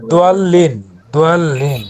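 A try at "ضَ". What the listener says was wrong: দোয়াল্লিন না দ দলিন নট দোয়া দ দ জবর জাস্ট শুধু দ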